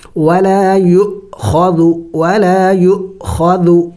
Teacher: چونکہ حمزے کے اوپر سکون جب آ جاتا ہے تو پھر حمزے کو جھٹکا دے کے پڑھا جاتا ہے۔